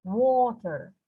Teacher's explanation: the wo part is stressed. It's called a stressed syllable.